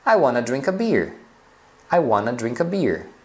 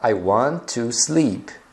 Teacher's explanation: Então, want e o to, eles juntam e pronunciam wanna. Então, se você já viu esse wanna escrito em algum lugar, ou já escutou alguém falando, então saiba que isso daí, na verdade, é a forma falada do want e o to juntos.